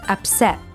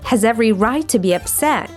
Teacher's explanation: the letter T in the word upset becomes a glottal stop. To make this sound, you simply block the flow of air coming through your throat, like upset.